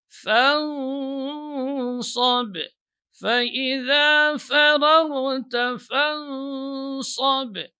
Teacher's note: Jadi huruf fa ini tidak boleh cenderung ke nun. Sehingga ketika pengucapan fa itu masuk ke khayshum ini tidak boleh. Tetap dia dibaca ya jelas fa.